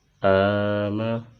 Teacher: حمزہ کو ایک الف کی مقدار کھینچ کر پڑھیں گے چونکہ اس پر کھڑی حرکت ہے اور کھڑی حرکت کی مقدار ایک الف ہے۔